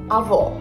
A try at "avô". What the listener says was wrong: Ah, não, ela falou avó, mas é avô. Porque a avó é a mulher do avô.